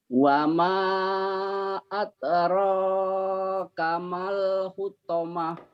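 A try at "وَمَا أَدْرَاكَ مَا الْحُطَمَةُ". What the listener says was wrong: Mad tobi'i menjadi pendek kalau ketemu sukun tuh Pak. Ditandai dengan warna oranye. Karena ini warna oranye maka berapapun hurufnya jangan dibaca. Dari sini nyamber ke sini Pak. Mal. Bapak tadi masih ragu, di sini panjang.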